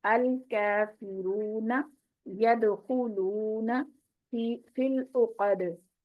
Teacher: यदखुलूना में दाल पे मैंने कलकला किया है, इसकी आवाज को हिलाना है क्योंकि ये हरूफ कलकलाने से है।